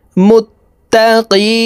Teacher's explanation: এখানে তিন আলিফ টানে নুনকে সাকিন করতে হবে কারণ মদের হরফের বামের হরফে ওয়াকফু হইলে মুদ্দে আরজি তিন আলিফ